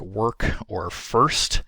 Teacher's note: my version of work and first that I clearly produce has that rhoticized vowel in it